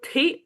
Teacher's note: त को हल्का सा ह मिला दिया तो वो बन गया थ।